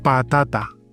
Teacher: So this is not pata, it's pata. Pata soft, no air. Pata, I don't have any air.